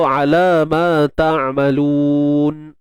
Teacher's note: Lun muncul bibir sebab lam tu berbaris hadapan.